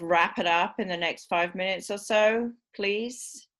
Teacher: that's the dominant choice of the rising tone it's a straight rise it's perfectly appropriate because it's the dominant person in the interaction